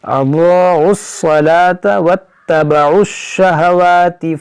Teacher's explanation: یہ دونوں الف یہ لام نہیں پڑھیں گے، اس عین کو صاد سے ملائیں گے